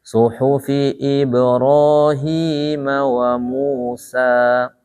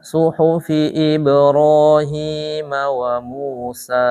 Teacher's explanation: Sekalipun dia di akhir, dia tidak boleh dipanjangkan lebih dari 2 harokat kalau mad tabi'i itu.